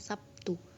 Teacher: Terlihat bunyi B berubah menjadi bunyi P sebagai akibat dari pengaruh bunyi T. Perubahan tersebut merupakan jenis asimilasi fonemis.